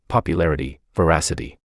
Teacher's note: have their stress on the third to the last syllable